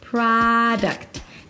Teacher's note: The primary stress is on the first syllable pra. There is no O, so it's not product, but an open a sound. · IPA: ˈpɹɑːdəkt